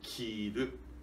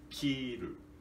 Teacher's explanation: para significar vestir, precisamos de dizer kiru, grave, agudo, kiru. E contrário, cortar, cortar significa, nós pronunciamos kiru, agudo, grave, kiru